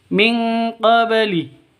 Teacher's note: Ba mati qabli harus dipantulkan karena qalqalah. Karena ada di tengah berarti qalqalah sughra.